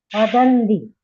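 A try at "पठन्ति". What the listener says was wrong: Patanti. Not padanti. It is patanti. You have to say ta. Practice saying takaraha there. Patati, patataha, patanti.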